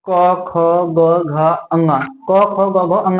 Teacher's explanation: के आ रहे हैं सीधे गले से ही आ रहे हैं हमको कहीं जीव डुलाने की जरूरत नहीं है ये हमारे गले से ही आ रहे हैं · ये हमारे गले से निकल के आ रहे हैं सीधे गले से ही आ रहे हैं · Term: कंठ से बोले जाने, कंठ